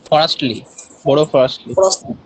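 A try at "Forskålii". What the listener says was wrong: এস এর উচ্চারণ নেই এখানে, এখানে এসটা হাইট আছে, ঠিক আছে, ফ্রস্টলি।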